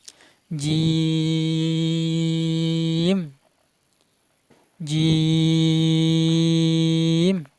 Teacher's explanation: জিম হরফের মাকরাজ জিহ্বার মধ্যখান শাম তারপর উপরে তালুর সাথে লেগে উচ্চারণ করবেন।